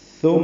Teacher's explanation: ثم میم مشدد پہ غنہ ہے